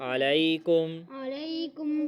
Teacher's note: یا لین ہے لمبا کر کے پڑھیں گے۔